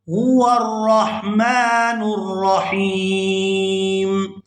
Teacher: کرتے ہیں، هو الرحمن الرحیم۔ یہاں پر وقف کریں گے تو وقف کی صورت میں میم جو ہے یہ ساکن ہو جائے گی